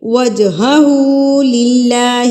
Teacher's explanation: قلقلہ کہتے ہیں کسی لفظ کو ہلا کے پڑھنا، تھرتھراہٹ کے ساتھ پڑھنا. تو یہاں پر جب جیم جو ہے وہ ساکن ہوگا تو اس کو ہم ہلا کے پڑھیں گے، قلقلہ کر کے پڑھیں گے